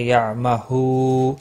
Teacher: ہو واو مدہ ہے، ایک الف کے برابر کھینچ کر پڑھیں گے